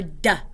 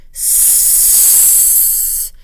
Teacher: D and S are said in the exact same place, so at the alveolar ridge, and they're both voiced, but the manner of the sound is different. One is a stop and one is a fricative.